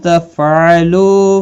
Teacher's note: تفعلوا لو واو مدہ ہے، ایک الف کی مقدار کے برابر کھینچ کر پڑھیں گے